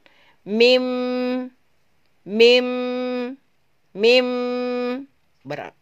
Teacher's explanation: ketika kita melafazkan mim sekalipun berawal dari 2 bibir dan huruf itu berakhir di khoisum atau berakhir di hidung, maka huruf itu disebut dengan huruf hidung atau khoisum.